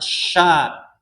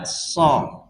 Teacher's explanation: kalau sya itu kan kerasa, sya ada hembusan. Kalau so nggak ada